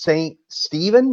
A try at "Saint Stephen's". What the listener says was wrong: Saint Stephen's. There's an S on the end, but yeah, you're